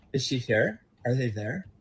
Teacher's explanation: you hear this really interesting hardening of the R sound as well